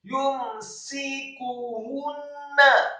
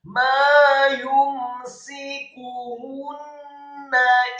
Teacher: Setelah membaca huruf kaf yang dhammah, setelahnya ada ha yang tafkhim dhammah 1 harokat. Setelah membaca huruf ha yang dhammah, langsung ditarik ke huruf nun yang ditasydidkan dan fathah 1 harokat.